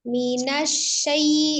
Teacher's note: Shin yang roga memiliki sifat tafasi menyebar minasyai. Di situ ada lin, ada ya sukun sebelumnya fathah diucapkan dengan lembut, mudah ya.